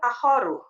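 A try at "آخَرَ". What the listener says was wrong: Akhoru atau akhoro? Salah kalau akhoro. Salah. Iya, yang benar akhoro pakai fathah. Tahu sebabnya kenapa, Bu? Karena talibannya fathah, maka akhoronya ikut dia.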